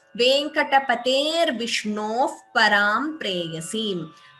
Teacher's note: Here when we chant together, we could combine these two words and chant it as Venkatapater Vishnoho. So rakara, r instead of the visarga.